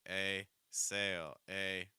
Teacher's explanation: For the A sound, the very back of your tongue is down, and then that mid front of your tongue is higher.